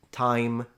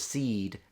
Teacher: when the I is pronounced I, time versus seed, seed is longer